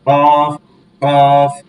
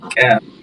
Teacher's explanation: কফটা কলকলা করে, ক্যাফটা হচ্ছে জিহ্বার মাঝখান তালুর সঙ্গে লাগবে